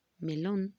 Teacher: la última sílaba es la que viene acentuada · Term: palabra aguda